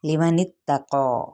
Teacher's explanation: पुर है और अलिफ मद्दा का कायम मकाम है, इसको एक अलिफ या 2 हरकत लंबा करेंगे